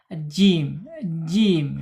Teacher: punggung lidah yang tengah ya terangkat ya. Jim jim gitu terangkat tapi bukan istilla ya bukan terangkat keseluruhan ya.